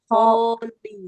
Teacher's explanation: Bukan hol, tapi ho panjang dulu.